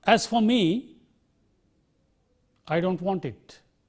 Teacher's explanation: Or if you have a phrase and followed by a sentence, a main clause, the phrase will get a rising tone and the main clause will get a falling tone